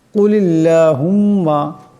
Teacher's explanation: বড় কাফ আওয়াজটিকে গলা থেকে আনতে হবে